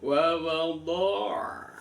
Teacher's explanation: ainnya matinya diperhatikan, wa wadha', masih ada suara mengalir ya